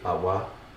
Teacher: so A with a low tone